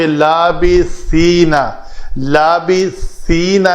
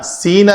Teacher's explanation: لابثینا میں بھی زبان جو ہے دونوں دانتوں کے درمیان سامنے کو نظر آئے تو یہ سا بنے گا، نہیں تو اندر رہے گی تو سین بن جائے گا۔